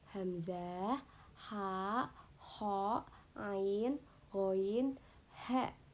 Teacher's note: keenam huruf idhar tadi disebut juga huruf halki. Karena apa? Karena mahrajnya berasal dari tenggorokan.